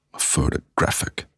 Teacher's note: Weak, weak, and strong.